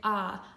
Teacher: and I know that there are two consonants so that means this o is going to be a short o it's not going to say oh it's going to say ah